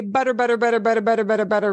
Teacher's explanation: it's one flap of your tongue behind your upper teeth